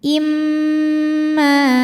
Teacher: Karena mim bertasydid. Cara membacanya adalah didengungkan. Jadi bunyi M tahan sampai ada suara masuk hidung. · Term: gunnah musyaddadah